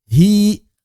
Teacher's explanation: Secara vokal, apakah hi, ha-i-ye karena ya-nya kita anggap adalah ya konsonan, atau ha-i-i karena kita anggap ya-nya berubah menjadi mad. Maka dalam bahasa Arab ini dibaca ha-i-i, hi panjang, bukan hi-i, bukan ya. Hi, tidak ada konsonan y-nya.